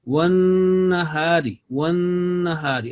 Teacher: Remember, this is a noon with mushaddad. You have to hold nasal sound for 2 seconds.